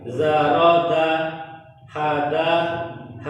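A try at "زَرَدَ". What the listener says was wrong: Nah, huruf zainya kurang. Yang di ya mesti dia menjauhi makhrajnya. Kecuali kalau dia sukun. Kalau sukun dia mendekati makhraj. Kena kan makhrajnya, tapi ketika dia berharokat dia justru menjauh.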